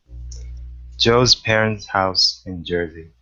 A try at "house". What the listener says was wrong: Good, good, nice.